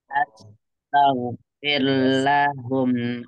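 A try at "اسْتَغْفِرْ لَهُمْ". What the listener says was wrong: Awalnya maaf Bu, awalnya ini fi'il amr ya, jadi istaghfir, is ya, istaghfir lahum. Ya, ini dari istighfar ya, jadi dari istighfar ya.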